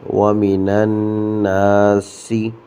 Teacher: سین کی سیٹی کو ظاہر کرنا ہے